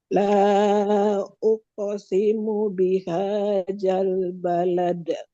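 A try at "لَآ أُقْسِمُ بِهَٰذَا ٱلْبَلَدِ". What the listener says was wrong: Lidah keluar sedikit. Zal balad. Za ujung lidah ini keluar sedikit. Zal.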